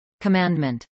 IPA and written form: kəˈmændmənt (commandment)